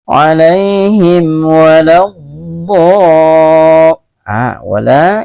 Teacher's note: mim sukun berjumpa dengan waw atau wa. Ini juga hukum bacaannya izhar syafawi, tidak boleh berdengung bacaannya.